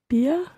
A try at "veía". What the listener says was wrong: It's veía. Okay, so it's very, very slightly irregular. It keeps the E of the V-E-R infinitive, and then it adds the IA endings on after that.